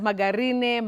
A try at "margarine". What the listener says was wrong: What is important for that second word, is the G takes the sound J, not G. You don't say margarine, you don't say margarine, but you say margarine. Margarine.